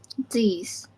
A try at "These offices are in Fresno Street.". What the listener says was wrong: Okay, so these is good except for th, right? The th sound. In this case, is these.